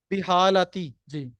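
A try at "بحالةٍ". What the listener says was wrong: تنوین کدھر گئی؟ تین آئے گا کیونکہ تنوین کو ختم کرنے کا کوئی سبب نہیں.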